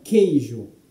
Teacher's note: O QU de queijo, ele corresponde a um único som, a um som de K, queijo. Você não pronuncia o U. Então nós temos duas letras que elas correspondem a um único som.